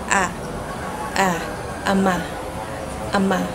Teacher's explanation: Ang punemang a ay binibigas ng mababa na pasentral dahil ang bahagi ng dila ay makikita sa sentral.